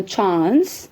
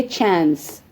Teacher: इसको UK में बोलेंगे चांस with a long आ, सो चांस. And US में बोलेंगे चांस, शॉर्ट ए साउंड